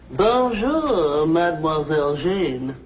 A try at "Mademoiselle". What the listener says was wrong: That's very good. Except for the mwah. Must be soft. Mwah. Watch my lips closely. Mwah.